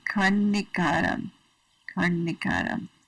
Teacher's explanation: So that N with a little dot on it means that when you make the N, usually we just say N, and our tongue hits the back of our teeth. But this N with the dot under it, the tongue hits the roof of the mouth, that ridge on the roof of the mouth. So it'd be karnikaram.